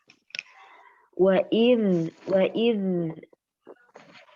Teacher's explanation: Huruf zalnya, huruf za tidak dikolkolahkan, mengalir huruf za tersebut jangan sampai dikolkolahkan.